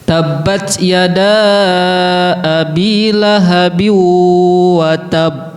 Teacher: Nah, ya da-nya harus lebih panjang daripada bi-nya.